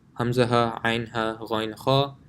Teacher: Hamza ha, ain ha, ghain kha, and it also goes from the lowest of your throat to the highest. So hamza ha are from the bottom of the throat, ain ha is from the middle of the throat, ghain kha is from the top of your throat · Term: letters of the throat